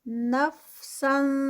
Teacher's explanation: تنوین ہے، اور تنوین جو ہے اس کے بعد حروف ہلکی نہیں ہے تو اخفا ہوگا